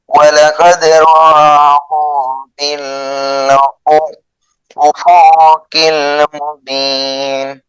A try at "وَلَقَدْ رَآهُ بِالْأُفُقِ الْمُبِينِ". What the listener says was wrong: বিল উফুকিল, উফু টান হবে না, বিল উফুকিল মুবিন।